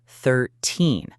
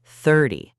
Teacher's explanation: When you say 13, the stress, the strong sound, is on the second part, 13. But when you say 30, the stress is on the first part, 30.